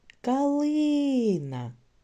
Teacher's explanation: в слові калина наголос падає на другий склад